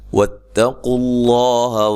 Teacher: تا کو باریک، قاف کو موٹا، لفظ اللہ کو موٹا ادا کرنا